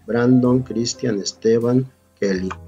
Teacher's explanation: La sílaba tónica es la penúltima.